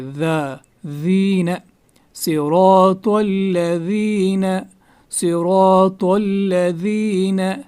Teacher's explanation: اس کے بعد الذین میں ذال جو ہے ذال کو نرم پڑھا جاتا ہے. ٹھیک ہے, اس کو زا کی طرح نہیں پڑھیں گے, ذال پڑھیں گے.